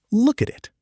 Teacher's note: The consonant sounds link right into the vowels.